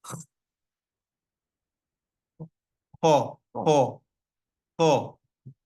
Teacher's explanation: The ho sound comes from the topmost part of the throat, close to the mouth. It's like a scratch on that part of the throat. So that part of the throat, very close to the mouth.